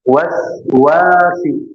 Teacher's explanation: Wau yang kedua panjang ada alif dua harakat. Waswasil knya tebal keluarkan dari tenggorokan bagian bawah eh bagian atas ya.